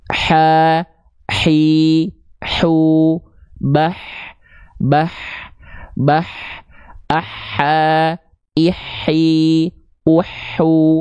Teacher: kalau tepat dilafalkan dari bagian tengah tenggorokan sesuai dengan makhraj dari huruf H kecil maka karakteristiknya akan berbisik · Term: huruf ha kecil